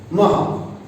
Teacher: કારણ કે વિસર્ગનું ઉચ્ચારણ હ થાય